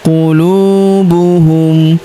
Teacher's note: Huruf lu kita panjangkan dua harakat karena wau sukun di depannya